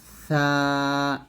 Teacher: খেয়াল রাখতে হবে যেন জিহ্বার আগাটা নিচের দাঁতের সাথে না লাগে অবশ্যই উপরের দাঁতের আগার সাথে লাগিয়ে ছা উচ্চারণ করতে হবে পাতলা ও নরম করে সা এরকম সাতাস বের হবে জবর পর খালি আলিফ এক লিটানো